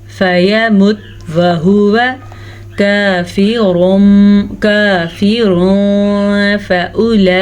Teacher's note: فَيَمُتْ وَهُوَ، فَيَمُتْ وَهُوَ كَافِرٌ فَأُولَئِكَ، یہاں پہ بھی اخفاء کا قاعدہ ہو رہا ہے. را کو ہم پر پڑھیں گے را پہ پیش کی وجہ سے